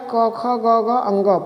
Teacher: क वर्ग का उच्चारण जो होता है कंठ के द्वारा होता है।